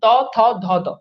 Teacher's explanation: ওকে, আর ত বর্গের যেগুলো ত, থ, ধ, দ, এগুলো দেখেন এই যে দাঁতের গোড়া থেকে, দাঁতের গোড়ায় জিহ্বাটা লাগে, ত, থ, ধ, দ, এই জন্য এগুলোকে বলা হয়, এগুলো হচ্ছে দন্তধ্বনি।